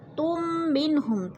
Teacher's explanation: میم ساکن کے بعد میم مشدد آ گیا ہے تو ادھر ادغام شفوی ہو رہا ہے، سختی سے جمع کر پڑھیں گے